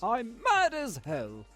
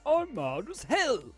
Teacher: In the first, the stress or the main accent was on the D sound in mad, and in the second it was on the L sound in hell.